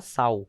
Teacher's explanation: sal aqui nesse sentido, o L tem som de U